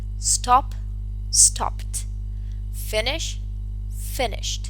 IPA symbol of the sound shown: t